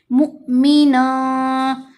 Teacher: अब हमने मुमिनन, एक तो ये नून नज़र आ रहा है ना, एक नून है जो तनवीन का है, नन, बन, तन, फन, सब में नून आता है ना जब 2 ज़बर 2 ज़ेर 2 पेश पड़ी जाती हैं। वो तनवीन की नून को अब हमने ज़ाहिर नहीं होने देना, उसको हमने नाक में छुपाना है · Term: इख्फा